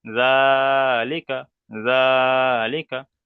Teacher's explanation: লামের নিচে জের এসছে, যেটি হলো হারাকাত, হারাকাতের পরাকে তাড়াতাড়ি পড়তে হয়, টান দেওয়া নিষেধ। কাপের উপরে জাবার এসছে, জাবারটি হলো হারাকাত, হারাকাতের পরাকে তাড়াতাড়ি পড়তে হয়, টান দেওয়া নিষেধ